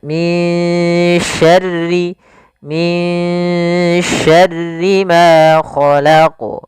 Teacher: Maka suara nun di sini kita samarkan kepada huruf shin. Maka min dengan tipis sinnya, min syarri ma khalaq. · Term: ikhfa